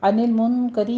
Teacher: نون ساکن کا قاعدہ اخفا حقیقی کریں گے اور را باریک پڑھی جائے گی